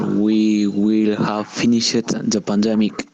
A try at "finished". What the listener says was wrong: En vez de pronunciarle finished, pronunciemos finished, sin la E.